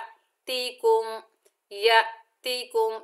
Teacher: हमजा साकिना को हल्का सा झटका दिया जाता है। या, या ऐसे करके हम पढ़ेंगे, या तीकुम, या तीकुम।